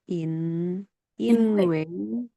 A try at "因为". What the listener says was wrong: Wei nada 4 ya, boleh tolong direvisi.